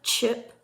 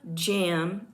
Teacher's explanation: Affricates begin as a stop, actually a plosive, characterized by complete obstruction of the outgoing airstream by the articulators, with a buildup of air pressure in the mouth, and release as a fricative. There are 2 affricate sounds. Both are palatal and differ only in voicing. The ch sound is an unvoiced palatal affricate.